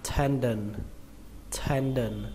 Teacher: Trọng âm của nó rơi vào âm đầu tiên, âm ten